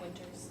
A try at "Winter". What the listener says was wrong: No winters, like the season. No S.